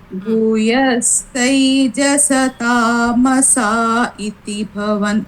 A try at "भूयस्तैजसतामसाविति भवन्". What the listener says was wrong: If you say iti, wait. If you say iti, it will be tamasau. Because we will be telling it continuously. We will be chanting like Bhuyastaijasamasa viti bhavan. We will be chanting it like this. That is why we will not say tamasau.